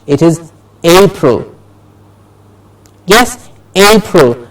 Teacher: A gets a clear stress and has to be said with a higher pitch.